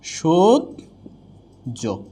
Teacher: দুইটাই অল্পপ্রাণ জ বা দুইটাই মহাপ্রাণ জ আসবে না। তাহলে একটা অল্পপ্রাণ একটা মহাপ্রাণ।